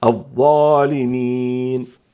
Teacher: والضاء في الظالمين فيها 4 دواعي للتفخيم، هي حرف استعلاء وحرف إطباق وجاءت مفتوحة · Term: تفخم هذه الضاء